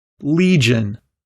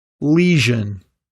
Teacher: some people involuntarily stop the air before making the zh sound as a result they end up pronouncing a different sound the j consonant